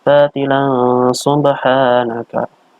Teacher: Ini adalah bacaan ikhfa, yaitu ada tanwin bertemu dengan sin. Seakan-akan mau masuk ke sini dibaca dengan samar-samar.